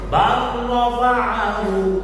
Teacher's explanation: Lam sukun diidghamkan pada ro dengan sempurna. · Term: idgham kamil